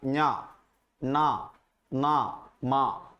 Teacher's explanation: അനുനാസികങ്ങളാണ് നഞ്ഞ ന മ നിങ്ങൾ ചൊല്ലുമ്പോൾ തന്നെ നിങ്ങൾക്കറിയാം ണ മൂക്ക് ഉണ്ടാവണം മൂക്കിലൂടെ നിങ്ങൾക്ക് ആ മൂക്കിൽ വിബ്രേഷൻ അറിയാം